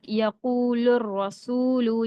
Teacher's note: تشدید ہے، یعنی کہ وہ حروف شمسی میں کا آیا ہے، تو ڈائریکٹ لام کو را کے ساتھ ملا کے پڑھیں گے